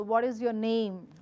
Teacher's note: my pitch has to follow a rise tone I cannot go down for simple reason if I go down then I'm giving out